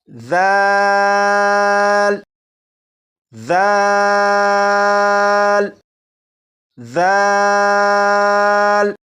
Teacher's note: اب اس حرف کو پڑھیں گے اور اس حرف کو پڑھنے کے لیے آپ صرف ایک بات پر توجہ دیجیے گا، اور وہ یہ کہ اس حرف کو پڑھنے سے پہلے زبان کی نوک اوپر کے سامنے کے 2 دانتوں کے سرے سے لگا لیجیے گا۔ جب آپ ایسا کر چکیں اس کے بعد اس حرف کو پڑھنا شروع کیجیے گا تو یہ بالکل صحیح پڑھا جائے گا۔